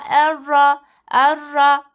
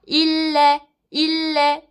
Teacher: gunnesiz idgam olduğu için mesela erra erra diye direkt bağlarız